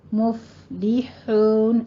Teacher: اور مفلحون میں آپ نے فا پہ تھوڑا سا حمز کرنا ہے. مفلحون، حون کو آپ نے ہا وسط حلق سے باریک ادا کرنی ہے